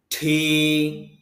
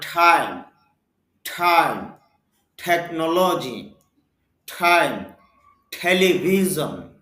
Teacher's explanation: ঠ সাউন্ড হবে, কারণ মুখ থেকে অতিরিক্ত বাতাস বের হবে, এটা হলো এক্সপিরেশন বর্ণ।